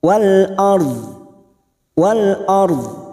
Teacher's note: ARD kita mewakafkan baca dua huruf ro sukun dan huruf do ro sukun kita baca tafkim karena sebelumnya ada harakat fathah dan kita lunakkan dengan huruf dad Wal ARD Wal ARD waallahu